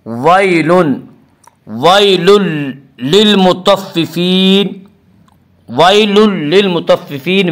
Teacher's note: وَيْلٌ للمطففین میں ادغام بلا غنہ ہوگا۔ اس کا قاعدہ ہے کہ نون ساکن اور تنوین کے بعد اگر حروف یرملون میں سے کوئی حرف آئے تو ادغام ہوگا، لام اور را میں ادغام بلا غنہ ہوگا۔